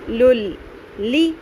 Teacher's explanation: اس میں نون کی تنوین کی ساؤنڈ نہیں آنی چاہیے۔ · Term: ادغام بغیر غنہ